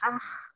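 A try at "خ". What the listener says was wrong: Kotor bu. Jangan ke ha ya bu ya. Ke kho. Ha dan ho mirip-mirip.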